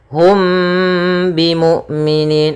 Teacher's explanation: mimnya ditahan dulu suara mimnya ditahan gunahnya maka dinamakan Ikhfa Syafawi